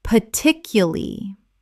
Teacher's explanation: Correct pronunciation, particuly. Native speakers often drop the R in the final syllable and reduce the word considerably.